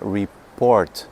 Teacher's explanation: Você põe a sílaba tônica, você põe a força da palavra em po, né?